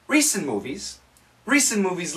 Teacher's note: the N and the M cancel out